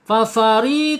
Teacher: Fafari ya, ri tipis ya, fa asyadfatain, ujung gigi seri atas menyentuh perut bibir bagian bawah. Fafari tipis, tarkik ya.